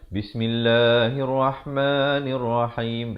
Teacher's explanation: La itu 2 harakat dan ma ini 2 harakat.